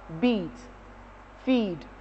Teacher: But the long E sound, we have it as beat, feed. You prolong the pronunciation of the sound.